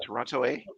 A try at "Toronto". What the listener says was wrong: But you gotta the last T is silent there, and it's Toronto.